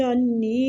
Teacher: نون مشدد پہ غنہ کریں گے اور یا مد ہے کھینچیں گے